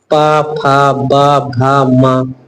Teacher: ओठों से बोला जाता है। प मतलब ओठ चिपकते हैं ये आपके सभी वर्ण बोलिए वो ओठ से चिपकेंगे। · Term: ओष्ठ